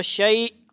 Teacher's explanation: آخر میں ہا کی کسی اور کی آواز نہیں، حمزہ کی آواز ساکن کی آئے گی